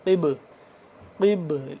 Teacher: قاف کو موٹا پڑھیں گے اور با کو ہم یہاں پہ با ساکن کی وجہ سے قلقلہ کریں گے۔